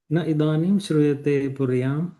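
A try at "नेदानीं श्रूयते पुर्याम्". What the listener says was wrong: So with sandhi it becomes nedanim, gunasandhi. Nedanim shruyate puryam.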